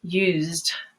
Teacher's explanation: But with all other end consonants of verbs, you're going to add just the D or the T and no E. So in a word like use, you have a voiced sound. So you want to choose the voiced D, used.